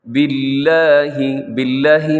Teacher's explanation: باللہ، باللہ میں لفظ اللہ ہے، اور اس سے پہلے با کے نیچے زیر ہے تو لفظ اللہ یہاں باریک ہوگا